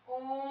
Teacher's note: तीन गुना समय लगे उन्हें प्लुत स्वर कहते हैं